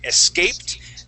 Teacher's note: our accent is going to go on that A